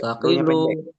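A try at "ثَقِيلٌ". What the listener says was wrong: Jangan dipanjangin.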